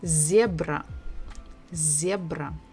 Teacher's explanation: So we stress the first syllable, zebra, zebra.